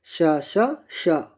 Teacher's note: इसमें स्वर तंत्रियाँ एक दूसरे से अलग होते हैं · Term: अघोष